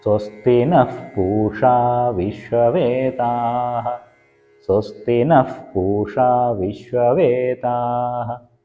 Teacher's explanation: ഈ വരിയിൽ നഹ പൂഷ എന്നുള്ളിടത്ത് നഹ വിസർഗത്തിന് ശേഷം പ വരുന്നിടത്ത് പവർഗത്തിലെ പ ആയതുകൊണ്ട് വിസർഗത്തിന് ഫ് എന്നുള്ള ഉച്ചാരണമായിരിക്കും